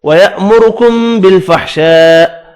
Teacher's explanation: بڑی مد کو 5 الف کی مقدار میں کھینچ کر پڑھنا ہے